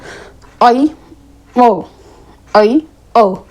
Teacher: अर्धसवित। आधा मुंह खुलता है